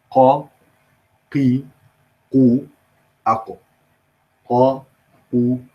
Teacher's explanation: If this is the soft palate, or as we described last time in detail, al-hanak al-rikhu, and this is the hard palate or the solid palate, al-hanak al-sulb or al-azmi, bony palate. Then the qaf comes from the back of the tongue being in contact with the soft palate